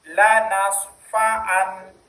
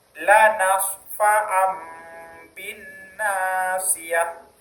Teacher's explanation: Iklab yaitu mengubah suara nun menjadi mim.